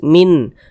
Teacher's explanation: karena dia izhar maka dibaca jelas tidak berdengung bunyi nunnya dibaca jelas n-nya tuh dibaca jelas min min tidak disama-samarkan dibaca jelas Min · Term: izhar halqi